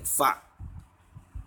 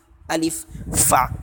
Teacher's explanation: और फ़ा का जो मखरज है वो ये है कि जो ऊपर के दांतों का जो किनारा है उसको नीचे के होठों पे हमें लगाना है